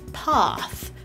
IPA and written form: pɑθ (path)